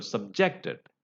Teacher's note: as a verb when you use it you know the stress is on the second syllable